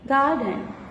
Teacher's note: the syllable gar, G-A-R, it is more stressed one. Garden.